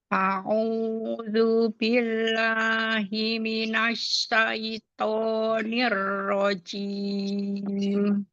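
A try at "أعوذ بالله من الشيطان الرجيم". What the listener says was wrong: Nah, pada kata asyaiton itu pakai huruf shin yang ada titik tiganya. A'udzu billahi minasyaitonir rajim. Nah, coba shin tunggal, tengah lidahnya naik. Asyaiton. Syai, jangan masuk ke hidung. Asyaitoni.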